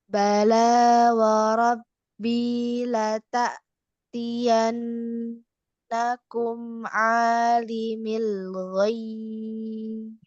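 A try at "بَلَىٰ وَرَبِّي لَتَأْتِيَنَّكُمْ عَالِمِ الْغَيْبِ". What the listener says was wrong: Ba-nya dikasih qalqalah ya. Ya, coba lagi.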